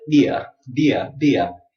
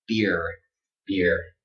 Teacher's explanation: Americans, we never say ia, ia, okay? We give it the strong R, beer, beer.